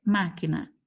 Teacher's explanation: não é a última não é a penúltima é a antepenúltima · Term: proparoxítona